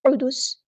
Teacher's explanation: قاف ہمارا heavy letter پورا ادا کریں گے اور سین کو ہم وقف کرتے ہوئے ساکن کر دیں گے اور یہ سین حروف صفیریہ میں سے تو سیٹی واضح ہوگی